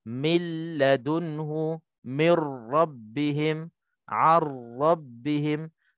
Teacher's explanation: Tak ada dengung. Nun mati itu terus masuk ke dalam huruf lam, terus masuk ke dalam huruf ra sebagai idgham kamil. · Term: idgham bila gunnah